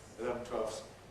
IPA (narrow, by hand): ɪˈlevn̩ ˈtweɫfs